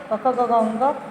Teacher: जैसे क वर्ग, क ख ग घ ङ, कंठ से बोला जाता है इसका उच्चारण स्थान।